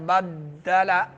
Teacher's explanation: اوپر نیچے ہونٹ جب آپس میں مل جاتے ہیں تو اس سے با ادا ہوتا ہے